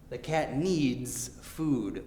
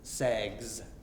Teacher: This time it's z, z sound, which is voiced. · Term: voiced Z